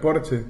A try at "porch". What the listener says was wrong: Tú te sientas en el no, se dice porch. Se dice porch. Claro, sí, se dice porch. Eso de ese Maracaibo que transformaron, le pusieron una che al final.